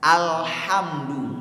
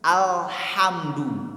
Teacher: makhraj huruf lam itu di ujung lidah bertemu dengan langit-langit depan. Alhamdu, bukan ujung lidah bertemu dengan ujung gigi seri.